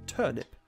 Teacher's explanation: british people tend to drop their r's pretty frequently just drop them entirely take them right out of the word